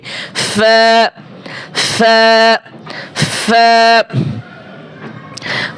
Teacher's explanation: 14 নম্বর মাখরাজ, নিচের ঠোঁটের পেট, নিচের ঠোঁটের পেট সামনের উপরে দুই দাঁতের আগার সাথে লাগিয়ে ফা